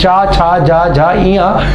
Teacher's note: च वर्ग की ध्वनियां जो होती है वो सभी क्या होती है तालव्य होती है